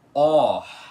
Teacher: O som dele é aberto e aspirado ao mesmo tempo, ou seja, ele é pronunciado assim, ó, com um som de o aberto no começo.